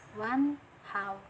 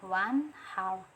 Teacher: nun mati bertemu salah satu huruf ijhar halqi yaitu ha, jadi cara bacanya ijhar, yaitu jelas